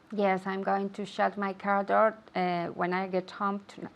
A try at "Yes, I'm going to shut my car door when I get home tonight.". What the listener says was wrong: Perfect. Good. Shut, shut, shut. Shh. That's the sound.